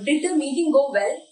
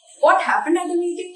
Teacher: In closed question, our voice goes up, and in open question, it goes down. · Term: intonation